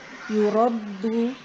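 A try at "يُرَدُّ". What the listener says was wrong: Jadi ditekan dulu, setelah itu baru dipantulkan. Jadi jangan langsung di yurad, tapi ditinggikan dulu atau ditekan dulu tadi.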